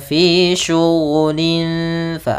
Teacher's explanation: Fa makhrajnya adalah gigi kita yang atas menempel dengan bibir bawah sehingga membentuk suara ada sedikit rongga untuk mengeluarkan nafas kita. Fa bukan pa, jangan sampai bibir kita terlalu rapat. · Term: makhraj huruf fa